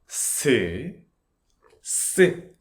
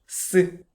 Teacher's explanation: This is the double version of s sound consonant. The sound is strong and relatively high. S S. Stronger and higher sound. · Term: double consonant